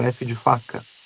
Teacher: entra ali em funcionamento o lábio inferior e os dentes superiores. Não dá para produzir um F de outra forma. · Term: labiodentais